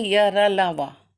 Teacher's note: तो बोलने पे जब मुख, ये वर्ड जो है ईषत विवृत, बोलने पे जब थोड़ा सा मुख खुला रहता है तो ये ईषत विवृत कहते हैं। जैसे य र ल व, ये ईषत विवृत हुए।